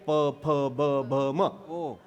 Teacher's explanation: आपल्याच ओठाला आपलाच ओठ लागला की अक्षर तयार होतं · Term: ओष्ठ